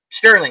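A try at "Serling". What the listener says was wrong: T. No T. No T.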